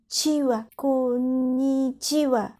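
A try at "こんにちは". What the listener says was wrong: Oui, et tu le dis plus vite. Konnichiwa. Tu mets un accent sur ko et pas chi. Konnichiwa. Si tu veux dire plus naturellement, tu peux moins prononcer ni. À la limite, après comme, tu dis i dans ta bouche sans trop sortir la voix. Comme, et tu ajoutes chiwa. Konnichiwa.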